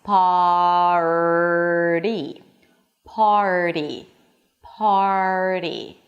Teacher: So you bring the tongue back for the R and then you bring it forward for the flap T. For the flap T, the tip of the tongue touches the upper pallet slightly like giving it a high five. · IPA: pɑːrɾi